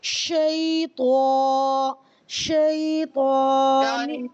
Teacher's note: اچھا شیطان جیسے آپ تا کہہ رہی ہیں نا تا یہ باریک باریک آواز آ رہی ہے یعنی یہ تا بن رہا ہے بجائے تو کے. آپ نے تو تھوڑا سا ہیوی ساؤنڈ کے ساتھ پڑھنا ہے.